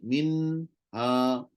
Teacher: bunyi nun lidah pun ada, rongga hidung pun ada.